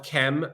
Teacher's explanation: didn't write vowels so when we um are we're saying chem we're assuming a kind of short e between the K and the M but really what we just have is K and M but